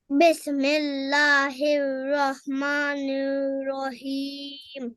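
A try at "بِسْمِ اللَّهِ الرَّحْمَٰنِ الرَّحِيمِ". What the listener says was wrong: اچھا پڑھا ہے، لیکن سین پہ دوبارہ آپ نے کلکلا کر دیا ہے، کلکلا نہیں کرنا. بسم اللہ الرحمن الرحیم.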